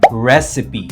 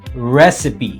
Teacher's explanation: recipe with a stress on the first syllable